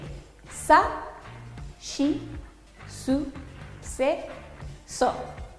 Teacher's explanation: No existe el sonido si. Los japoneses van a decir shi